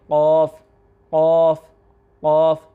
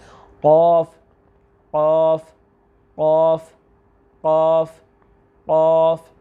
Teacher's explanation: تو اس کو آسانی کے ساتھ سمجھنے کے لیے یہ بات ذہن میں رکھ لیجئے آپ کہ جہاں پہ ہماری زبان کی جڑ ہے, جہاں پہ جڑی ہوئی ہے زبان, جہاں پہ زبان کی جڑ ہے بالکل اس کے مقابل اس کے سامنے اس کے اوپر تالو کا نرم حصہ ہے. یعنی کہ دونوں ایک دوسرے کے آمنے سامنے ہیں.